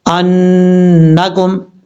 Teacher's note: اب اس کے بعد ہے انکم، حمزہ نون زبر ان، نون زبر نا، کاف میم پیش کم، نون کے اوپر شدہ غنہ کریں گے، ایک الف کی مقدار